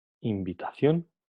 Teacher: Entonces el sonido N pasa a ser bilabial, pasa a pronunciarse como una M